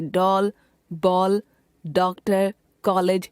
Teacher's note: अंग्रेजी भाषा से आए शब्दों में अ का उच्चारण हिंदी आ से भिन्न होता है। यह ओ तथा औ के मध्य का प्रतीत होता है, अतः उन शब्दों के ऊपर चिन्ह लगाया जाता है, जैसे डॉल, बॉल, डॉक्टर, कॉलेज आदि।